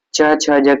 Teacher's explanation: स्पर्श व्यंजन है, इनका उच्चारण स्थान तालव्य है।